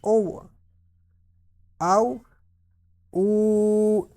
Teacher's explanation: اب یہ واؤ ساکن سے پہلے پیش ہو تو آپ کو پتہ ہے کہ واؤ مدہ ہوگا، تو اس کو تھوڑا سا ایک الف یا 1 سیکنڈ کی مقدار کھینچ کر پڑھیں گے